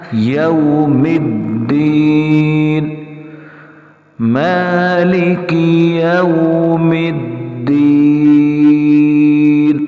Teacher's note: میم کو ہم نے دال کے ساتھ تھوڑا سختی سے ملانا ہے، واضح ملانا ہے